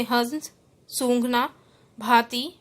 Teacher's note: जब इसका उच्चारण किया जाता है तो वायु नाक व मुख दोनों से निकलती है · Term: अनुनासिक